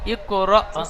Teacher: হামজার উপরে সাকিন এসেছে, সাকিন যুক্ত হামজাকে একটু ঝাটকা বা ধাক্কা দিয়ে পড়তে হয় · রর উপরে যাবার এসছে তাই রকে পুর করে পড়ব